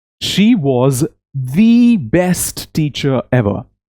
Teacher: before a consonant sound, it is pronounced as E, long E